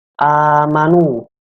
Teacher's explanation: A di sini dibacanya panjang, panjangnya itu 2 harokat. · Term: mad badal